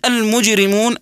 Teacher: الجيم تقلقل في هذه الكلمه قلقله صغرى لانها ساكنه واذا وقفنا كذلك على كلمه المجرمون فيها مد عارض للسكون يمد